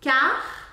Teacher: o r do final será pronunciado aqui Car ar saindo da garganta